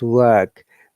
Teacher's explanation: In American accent, they say work because R must be there. In British pronunciation, we never pronounce R in the work, the word. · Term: non-rhotic English